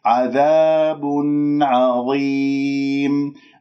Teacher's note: العين من حروف الإظهار الستة، إذن هنا يجب أن نظهر النون وأسمعها. الخطأ الذي يحدث أنه أقطع صوت النون، عذاب عظيم، لا، عذاب وضم، أبين الضم ثم بعد ذلك النون اللي راح تصير من التنوين، عذاب عظيم.